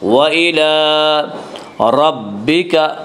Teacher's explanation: وَإِلَىٰ لام کے اوپر کھڑا زبر ہے، کھڑا زبر کو ایک الف کے برابر کھینچ کر پڑھیں گے